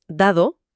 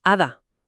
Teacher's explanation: A ver, no suena igual si dices dado, que es como más explosiva al principio, que si dices hada, que ahí entre vocales es más suave, casi como un roce